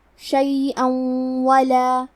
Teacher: کلمت شیئن کے آخری میں حمزہ پہ تنوین زبر ہے، پھر حرف الواو آتا ہے کلمت ولا، واو حروف الادغام بغنہ میں سے ہے، تو ہم یہ حکم کو غنہ اور تشدید کے ساتھ ادا کریں گے